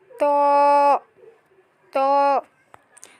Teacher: জিহ্বার আগার উপরের সামনের 2 দাঁতের গোড়ার সাথে লাগিয়ে মোটা করে পড়তে হবে